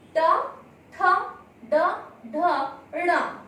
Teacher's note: इस वर्ण का उच्चारण स्थान हुआ मूर्धा, क्योंकि इन वर्ण को बोलते हुए मूर्धा से ध्वनि का उच्चारण होता है